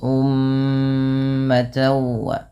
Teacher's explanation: mim berharakat tasydid ini ditahan dulu bunyi suara mnya sepanjang dua harakat karena terdapat hukum tajwid berupa bacaan ghunah maka jangan hanya sekedar ummat tapi ditahan dulu ummata wa kemudian pada lafal Di sini ada tan, yaitu ta yang berharakat tanwin.